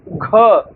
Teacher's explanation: जैसे देखिए क बोलने में कम वायु बाहर निकलती है, ख देखिए ज्यादा निकल रहा है, ग बोलने में कम निकल रहा है, घ बोलने में ज्यादा मुख से वायु बाहर निकल रहा है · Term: महाप्राण